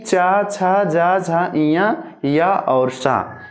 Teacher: इनका उच्चारण स्थान तालु होगा